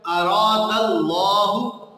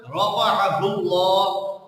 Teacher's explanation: مثلا لفظ اللہ جو ہے، لفظ اللہ، اس کی جو لام ہے اس کو باریک اور موٹا پڑھنے کا جو ایک قاعدہ ہے کہ اگر لفظ اللہ سے پہلے زبر یا پیش آ جائے تو اس میں صرف یہ پائی جائے گی کہ اس لفظ اللہ کی لام کو پر پڑھا جائے گا، موٹا پڑھا جائے گا۔ مثال کے طور پہ اراد اللہ، اب اللہ، لفظ اللہ سے پہلے دال پر زبر آیا ہے تو اس کو موٹا پڑھا جا رہا ہے اراد اللہ۔